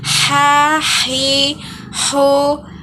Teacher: huruf ini dikeluarkan dari tengah tenggorokan kita